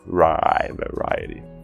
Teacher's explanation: O rai é a sílaba enfatizada e ela termina na vogal I. Então a gente tem o som longo.